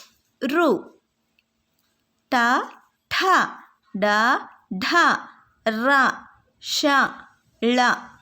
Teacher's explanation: ಷ ಇವು ತಾಲವ್ಯಗಳು ಮೂರ್ತವ್ಯ ಗಳು ಮೂರ್ಧವ್ಯಗಳು ಎಂದರೇನು ಅಂಗಳಿನ ಮೇಲ್ಭಾಗಕ್ಕೆ ಹೋಗಿ ತಾಗುವಂತದ್ದು ಅಂಗಳಿನ ನಾಲಿಗೆಯ ಅಂಗಳಿನ ಮೇಲ್ಭಾಗಕ್ಕೆ ಹೋಗಿ ತಾಗುವಂತದ್ದನ್ನ ನಾವು ಮೂರ್ತವ್ಯಗಳು ಎಂದು ಕರೆಯುತ್ತೇವೆ